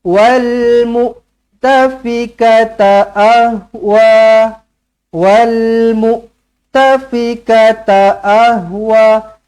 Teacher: semua pendek wa je yang panjang